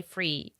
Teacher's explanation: changing the sound th with f, right? Instead of saying 3, they would say free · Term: Cockney accent